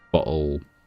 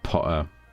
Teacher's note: in my native accent, my London accent, there are no T's really in the middle of words. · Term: glottal stop